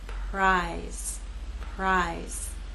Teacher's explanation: You will not feel vibration here. Again, R will begin without vibration, and then you'll add your voice as we move into I.